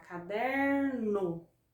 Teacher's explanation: observa que a sílaba der é a sílaba que eu coloco mais força mais intensidade é a sílaba que eu pronuncio com maior que eu estendo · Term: paroxítona